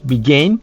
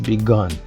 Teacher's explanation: Pour la prononciation de ces deux-là, le passé, c'est dans le nez, began. L'autre, c'est dans la gorge, begun.